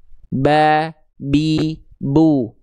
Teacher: Ba dilafakkan dari asyafatain, dari bibir. Bibir atas, bibir bawah disentuhkan ya. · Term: huruf ba